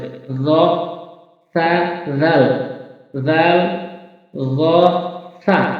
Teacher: জিহ্বার আগাটা সামনে উপরের দাঁতে আগার সঙ্গে লাগাবেন এভাবে জাল যেভাবে উচ্চারণ করছেন জ হরফটি সেভাবে উচ্চারণ করতে হবে